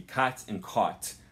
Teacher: If you're from California, you might not have two different vowels here. So if you would say the word cot, C-O-T, as in the small folding bed, and the word caught, C-A-U-G-H-T, as in I caught the ball, you might pronounce those two words the same, and that's okay.